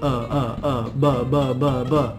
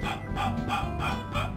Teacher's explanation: They look almost the same because we make them in nearly the same way. We use our lips. What's the difference? The difference is the voice. For b, b, I use my voice here.